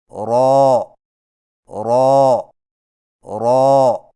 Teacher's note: را کی ادائیگی میں زبان کی نوک کی پشت کو اوپر والے دانتوں کے مسوڑوں سے لگا کر موٹی آواز میں پڑھیں، یعنی رو رو رو۔